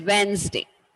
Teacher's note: when we pronounce the whole word as such, the D is silent